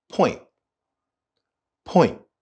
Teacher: the T at the end of the word point is not fully spoken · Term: cut short